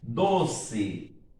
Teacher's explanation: Olha aí que a sílaba mais forte é do.